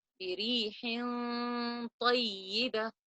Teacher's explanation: I'm ready to say the ta while I'm pulling the noon in my nose.